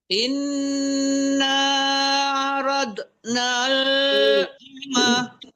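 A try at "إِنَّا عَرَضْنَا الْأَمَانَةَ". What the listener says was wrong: Tidak boleh memantulkan bot. Inna arad tebal tapi tidak boleh mantul.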